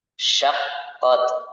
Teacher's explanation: syaqqat ada sifat at-tafashi, menyebarnya suara di dalam mulut